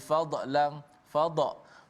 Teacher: huruf dad dibaca dengan tafkhim, tebal, tanpa qalqalah. Tidak ada qalqalah pada dad.